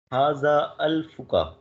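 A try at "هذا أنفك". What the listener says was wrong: अल्फ नहीं, अल्फ ये नून है, नून नून।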